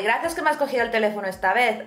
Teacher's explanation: probably you heard how we pronounced “C” and “Z” or “C” and “Zeta” as a “TH” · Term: el ceceo